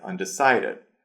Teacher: So the word undecided the stress goes on decided